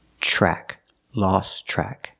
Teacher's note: The TR in track is pronounced with the ch sound like chicken.